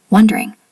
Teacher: wondering usually sounds like two syllables, not three